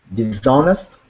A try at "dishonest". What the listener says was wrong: Dishonest is correct.